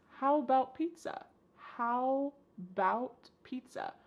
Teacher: The first a in the word about is gone. It's just missing. So, we say how about pizza?